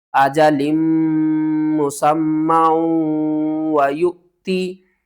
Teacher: और यहाँ पर इस वाव को आपने छोड़ देना है, हमजा साकिन है तो झटके के साथ पढ़ेंगे